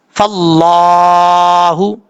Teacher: یہاں پہ اللہ کے لفظ سے پہلے زبر ہے فا کے اوپر، اس لیے اس کو پر پڑھیں گے. فا کو جب لام سے ملائیں گے تو بیچ میں الف ہے پھر لام ہے، ان دونوں کو چھوڑ دیں گے، فا کو ڈائریکٹ لام کے ساتھ کنیکٹ کریں گے